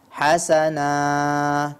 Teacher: di ujung ya pada wakaf kata Hasanah itu madnya kepanjangan ya Hasanah tidak perlu panjang sekali Dia Cukup dua harakat saja